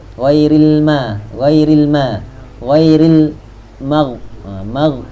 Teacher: Ghain tu tebal, mim tu nipis. · Ghain tu tebal. Tapi kena lepas sikit sebab apa? Dia rakhawah.